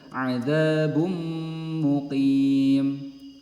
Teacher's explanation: Jadi huruf nun sukunnya melebur ke huruf ya dan digunnahkan. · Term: idgham bi gunnah